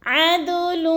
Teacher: عین کو ہم نے حلق کے درمیانی حصے سے ادا کرنا ہے، حمزہ اور عین میں فرق کر کے پڑھنا ہے ، اور دال ساکن ہے، اس کو ہم نے ہلا کر · دال ساکن ہے، اس کو ہم نے ہلا کر پڑھنا ہے اور حروف قلقلہ میں سے ہے